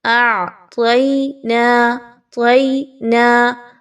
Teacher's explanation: طا کو موٹا ادا کیجیے، باریک نہیں پڑھنا، یہ حروف مستعلیہ میں سے ہے۔